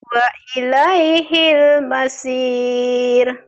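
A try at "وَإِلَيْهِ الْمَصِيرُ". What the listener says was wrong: Sad. Wa ilaihil masir. Sad. Wa ilaihil masir. Sad ya masir.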